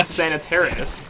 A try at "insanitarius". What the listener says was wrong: pretty sure you just added like 2 extra syllables in there.